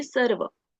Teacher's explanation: So if we say sarva, it will be wrong because as we can see here pe A ke upar there is no line, so we need not elongate the a sound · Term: short vowel